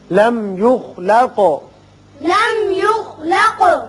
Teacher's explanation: میم پر اظہار ہوگا خا پر پڑھیں گے قاف پر قلقلہ